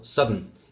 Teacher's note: If you transcribe that, and the second syllable there would only be a l without the help of a sonorant here, of a vowel here. So a sonorant on its own as a syllable without the need of a vowel · If you transcribe that, you would actually see an n symbol without a schwa or anything. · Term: syllabic sonorant